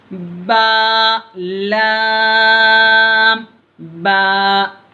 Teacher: बा का मखरज तो बता दिया आपको, दोनों होठों की तरी यानी दोनों होठों के भीगे हुए हिस्से से बा अदा होता अंदर से